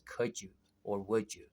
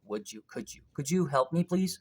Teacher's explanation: it's safer to pronounce it in fast speech as could you or would you right so d and y becomes j